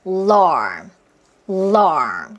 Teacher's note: 자, 그러면 L 사운드 하고 L, R, L 천천히 하시는데 L까지 했을 때 혀 느껴보세요. 혀 끝이 먼저 L을 위해서 입천장에 치경에 탁 닿았다가 러 하면서 떼어지죠. 그리고 할 때는 혀가 아주 밑에 쫙 하고 느려져 있어요.